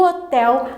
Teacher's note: o hotel, a última sílaba tel é uma oxítona